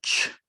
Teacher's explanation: a combination of a stop and fricative sound so it kind of blends both · there's a ch, which kind of starts off at a t sound and ends with a sh. So ch. So there's this combination of two patterns going on there. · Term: affricate